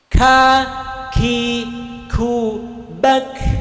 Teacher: K-nya itu ada desis karena mempunyai sifat yang namanya hams, berdesis, anginnya lepas.